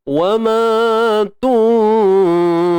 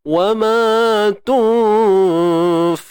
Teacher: Nun mati bertemu fa ni ikhfa hakiki.